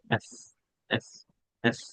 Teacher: এফ, উপরের দাঁত নিচের ঠোঁট, উপরের দাঁত নিচের ঠোঁটের সাথে বাজবে। এফ, হালকা একটা সাউন্ড আসবে।